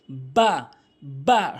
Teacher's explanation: এরপরে বা ভুল উচ্চারণ, বা ভুল উচ্চারণ, সঠিক উচ্চারণ হচ্ছে দুই ঠোঁটের ভেজা অংশ মিলিত করে বা বলতে হবে, বা, বা সঠিক উচ্চারণ।